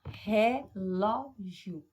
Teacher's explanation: A sua boca abre 3 vezes, então eu tenho uma palavra trissílaba, mas observe que a sílaba tônica ela é a segunda sílaba de trás para frente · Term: paroxítonas